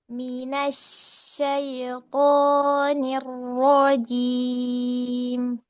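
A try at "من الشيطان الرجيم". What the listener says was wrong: Ya, syai masih ngayun.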